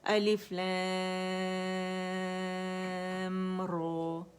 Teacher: फिर रॉ अदा करेंगे मद असली 2 काउंट, ज़्यादा इसे रॉ को लंबा नहीं करेंगे